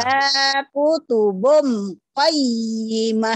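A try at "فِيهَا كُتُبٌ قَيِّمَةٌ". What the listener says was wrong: Finya panjang. Fiha kutubu qayyimah.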